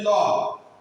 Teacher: জিহ্বাটার পাশ দিয়ে বাতাসটা বের হচ্ছে, তাহলে ল। পার্শ্বিক বর্ণ হচ্ছে একটি।